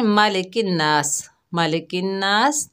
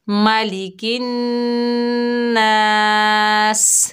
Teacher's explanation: नून में गुन्ना होगा और सीन पर हम वफ करेंगे